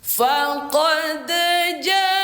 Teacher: mad P5 adalah hukum dari mad wajib muttasil dibaca panjang lima harakat